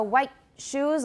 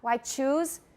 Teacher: The timing is different. We have a longer pause after the T in white than we do after the T in choose. There's still a T there and we still stop, but we stop a very, very short time.